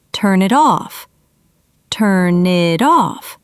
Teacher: Can you hear how it's one smooth phrase, not three separate words? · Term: linking